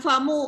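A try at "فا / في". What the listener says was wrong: Fa, Fi. It's not Fama, it's Fa and Fi.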